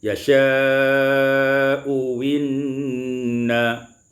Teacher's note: Ibdalul hamzati tsaniyah wawan khalisah, ditukar hamzah yang kedua itu dengan waw maksurah yang dikasrahkan